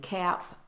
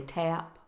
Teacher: some students come in and they're substituting the t sound for the k sound